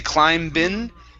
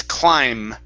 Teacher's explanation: the b at the end of climb is silent so we don't say climb bin it's climb only with an m